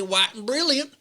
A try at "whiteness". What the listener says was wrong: you forgot to pronounce the H, the white.